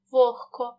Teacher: тобто він переходить у парний глухий наприклад у слові вогко дзвінки г перед глухим к вимовляємо як х